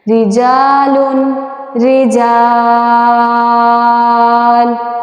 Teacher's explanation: تو یہاں پہ مد بنتی ہے، مد عارض وقف، جس کو ہم کھینچ کے پڑھتے ہیں